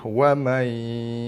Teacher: Wa may skip nun terus masuk ke dalam ya. Masuk ke dalam ya tapi tidak ditekan. Okey. Tu nama bacaan idgham memasukkan bacaan dia ke dalam huruf ya.